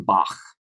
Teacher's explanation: we have the voiceless uvular fricative. This is Bach, the ch in Bach